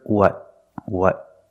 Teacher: the vowel in what is a short sound like cup up uh uh together what what and we don't remove the